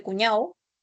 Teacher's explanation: vas a tener la elisión de la consonante oclusiva sonora al término. Por ejemplo, en la palabra cuñado se percibe cuñado.